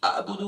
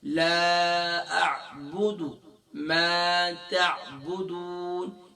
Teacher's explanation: تو عین کو ادا کرتے وقت گلے کے مڈل سے ادا کریں گے. اب یہاں پر ہم اسے حمزہ کی آواز نکالتے ہیں، حمزہ کا ساؤنڈ پڑھتے ہیں. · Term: عین کا ساؤنڈ